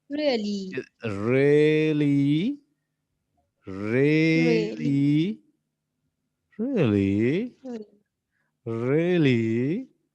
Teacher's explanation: ऊपर नीचे से ऊपर टोन जाएगी और फिर ऊपर से नीचे फाल होगी